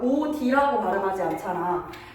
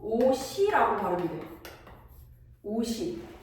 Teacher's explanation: 음절의 끝소리 규칙으로 시옷을 디귿으로 바꿔서 오디라고 발음하는 게 아니라 오시라고 발음해.